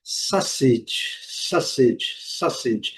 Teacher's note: esse U não é pronunciado, mas ele faz a combinação com o a, dando um som quase que de o.